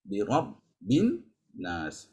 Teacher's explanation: Jangan lupa an-nas itu dengung dulu. Wajibul gunnah nun bertasydid itu wajibul gunnah.